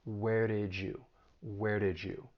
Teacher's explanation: so that final DN did we can blend that with the beginning Y sound in you that's assimilation and when they blend together you get a j sound